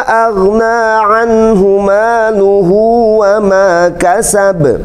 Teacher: Ada coret panjang, disebutnya mad jaiz munfasil. Ada 4 harakat di sana.